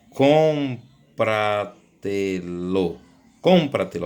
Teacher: Então, a sobresdrúxula, que não existe no nosso português, é uma palavra onde a sílaba tônica é anterior à antepenúltima